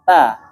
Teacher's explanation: Ta itu kan yang menempel adalah ujungnya saja. Nah, ujungnya menyentuh pangkal gigi seri. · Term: huruf ta